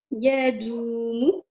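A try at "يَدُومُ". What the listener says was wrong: Ouais, mais relis-le parce que tu prononces le ya de façon longue.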